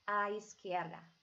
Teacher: Now notice when my Z is actually sounding like an S sound